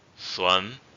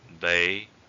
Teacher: The first tone is called raising tone. It's called raising tone, but there's some nuances. You don't raise it too high. It's like the tip to pronounce this tone is that you sound kind of depressing.